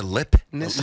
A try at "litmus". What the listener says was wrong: There's a T in there. There's a T. Litmus.